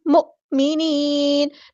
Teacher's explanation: نون کو ہم ساکن کر دیں گے وقف کرتے ہوئے، مد عارض بھی ہوگی